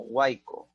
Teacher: Vocal cerrada, luego vocal abierta y luego vocal cerrada. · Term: triptongo